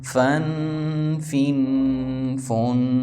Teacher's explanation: فا اوپر والا جبڑا نیچے والے ہونٹ پر رکھیں گے تو فا ادا ہوگا، مطلب دانتوں کا جبڑا پورا نیچے والے ہونٹ پر.